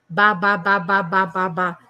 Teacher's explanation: Eu sinto que a vibração está nos meus lábios. Eu junto os meus lábios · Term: ponto articulatório